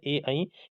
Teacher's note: ए, ऐ कंठ और तालु की मदद से बोले जाते हैं।